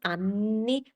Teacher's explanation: So he correctly says anni by elongating the N sound. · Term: double consonants